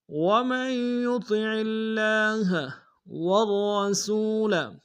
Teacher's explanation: را کو موٹا ادا کریں گے، را کے اوپر تشدید زور دیں گے